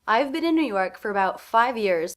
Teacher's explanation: two words unstressed are again quite quick for about and then five and years are both given more time because they're stressed